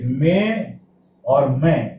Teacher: इन दोनों में एक्चुअल में बिंदी है, लेकिन वो बिंदी अनुनासिक का उच्चारण कर रही है।